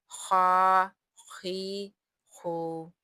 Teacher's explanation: خا ابتدائی حلق کے سب سے پہلے والے یعنی کہ سب سے اوپر والے حصے سے ادا ہوگا